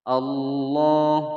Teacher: lafaz jalalahnya dibaca tebal karena sebelumnya huruf yang berharokat fathah. Allah panjang dua ketukan.